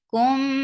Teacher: And this is idgham shafawi. You're keeping the sound in your nose for a longer time.